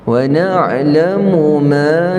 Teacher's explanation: ain sampai halqum kita, tengah halqum, wasatil halqa. Wa na'lamu ma, dua harakat, mad asli tuwas.